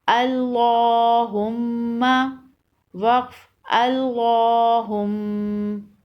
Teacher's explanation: اللہم کے لام سے پہلے زبر ہے اس لیے لام کو موٹا پڑھیں گے، اور میم مشدد ہے یہاں غنہ ہوگا